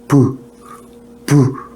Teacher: 자, 여기서 이 바람을 호흡하면서 호흡을 끌어올리는데 막힙니다. 막힌데 막았다가 와서 빵 요걸 터뜨립니다. 팍 터집니다. 이 소리가 파열음이라고 합니다.